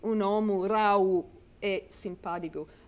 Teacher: The V becomes a W. Right. So you have a phonological process there which makes it, if we're thinking about how does it sound, it does sound different from Italian.